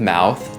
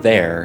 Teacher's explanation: Again, another thing I never noticed with English, but it is really important here, and that is that there's actually two different sounds with th at the end of mouth, the th is kind of soft, but at the beginning of there, it is kind of buzzy, or a z sound, as I put in the chart on tofugu.